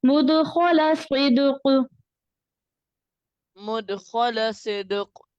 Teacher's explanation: جو قوف ہے نا اس کی آواز تھوڑی سی باؤنس ہوگی